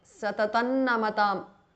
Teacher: Satatan Namatam because of Sandhi. The Anuswara of Satatam changes to N.